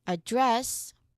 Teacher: The second version, address, where the second syllable is stressed, we're referring to speaking.